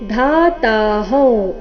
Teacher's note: ಧಾ ಮಹಾಪ್ರಾಣ ದೀರ್ಘ ಧಾತಾಹೌ